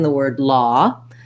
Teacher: it's a rounded vowel it's not an o sound or an ah sound kind of ah law just like in the word law so